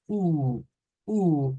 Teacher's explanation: Esa es como la u pero u u sin redondear se mantiene una apertura pero no es una apertura redonda